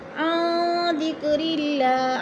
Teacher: نون ساکن کے بعد دال ہے حروف اخفا میں سے تو ادھر اخفا کریں گے، آواز کو ناک میں چھپا کر پڑھیں گے۔ ذکر اللہ، اللہ پر پڑھا جائے گا اس لیے کہ اللہ سے پہلے لفظ را کے نیچے زیر ہے تو اللہ کو پر کر کے پڑھیں گے۔